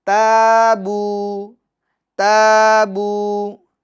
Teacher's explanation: یہ تا کے الف کو ہم کیا کریں گے؟ باریک پڑھیں گے، اور الف مدہ بھی ہوگا، ایک الف کی مقدار کھینچے گے، بو میں بھی ایک الف کی مقدار کھینچے گے، یعنی تابو تابو، ایک الف کی مقدار کھینچیں گے۔